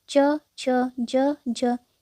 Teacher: च, छ, ज, ज ये चारों तालव्य व्यंजन हैं।